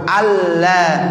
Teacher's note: Ya, jadi nunnya nggak ada lagi. Ya, jadi nun mati ketemu lam berarti harus dibacanya alla, idgham bila ghunna